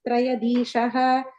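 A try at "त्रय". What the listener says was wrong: And the tra, you're saying the full tra there. Traya, you're saying is triya.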